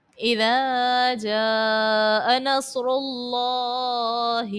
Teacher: اللہ تبارک و تعالیٰ کے نام سے پہلے پیش ہے، اس کو پر پڑھا جائے گا، موٹا پڑھیں گے